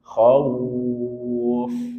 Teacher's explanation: Khauf lepaskan udaranya. Dan dia punya sifat rakhah. Sehingga ketika sukun alirkan suara dengan sempurna.